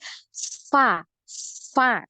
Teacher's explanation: makhraj huruf fa yang ini adalah di perut bibir nempel di ujung gigi